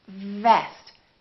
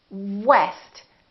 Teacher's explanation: a lower lip touching the upper teeth vest and what West we round our lips and the lower lip doesn't touch anywhere · So for example, when you say vest, make sure that it doesn't sound like west. So V is just a lower lip touching the upper teeth.